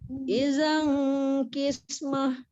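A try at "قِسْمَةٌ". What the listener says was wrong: Qis tu tebal sikit. Idzan qismah.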